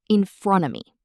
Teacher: We drop the T at the end of front and drop the V sound at the end of.